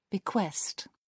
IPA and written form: bɪˈkwɛst (bequest)